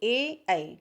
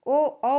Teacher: कंठ तालव्य में ए और ऐ आएगा लेकिन कंठोष्ठ अगर पूछा जाएगा तो ओ और औ हो जाएगा